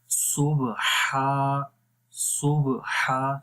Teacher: हा की आवाज़ भी क्लियर है, लंबा भी कर रहे हैं। और फिर नून को आगे मिलाएंगे और लाम को मोटा करेंगे।